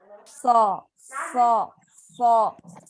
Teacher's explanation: تو سی ٹی اور اس کی ہمس کا مطلب یہ ہے کہ جب آپ صاد کی زبر بھی پڑھیں گے تو آپ نے کیا کرنا ہے، پہلے اس کی سی ٹی اور اس کا ہمس ادا کرنا ہے